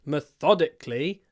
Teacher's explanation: in this word methodically the stress moves to the second syllable